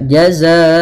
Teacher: kita masukkan tanwinnya dengan menahan gunnahnya